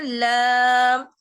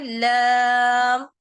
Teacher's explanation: ऊपर के जो 4 टीथ हैं उसके मसूरों से जबान की नोक लगेगी